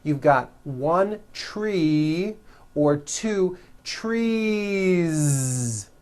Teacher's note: you continue the voicing throughout the whole word and add on a voiced Z